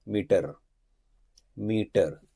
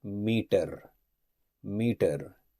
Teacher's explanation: in Indian pronunciation we say meter meter we go with a strong T sound